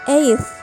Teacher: In the word eighth, the influence of final dental sound results in the dental articulation of T sound